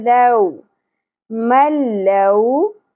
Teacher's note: واو ساکن سے پہلے زبر حرف لین نرمی سے ادا کرنا ہے، لو نہیں پڑھنا ہے.